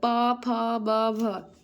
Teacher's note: पा फा बा भ, इसका उच्चारण स्थान ओष्ठ होता है